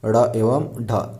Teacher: तो ऐसे व्यंजन जिनका उच्चारण इस प्रकार से होता है, जीभ ऊपर उठता है, मूर्धा को स्पर्श करता है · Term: उत्क्षिप्त व्यंजन